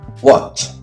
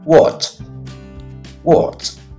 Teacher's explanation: This word ends with the sound ch, which is voiceless.